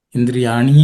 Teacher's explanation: Indriyani and the ni and e together become a longer ni.